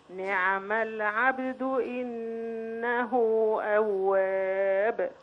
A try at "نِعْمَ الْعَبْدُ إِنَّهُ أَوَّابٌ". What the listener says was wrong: جزاك الله كل خير بس المدى ناقص شوي.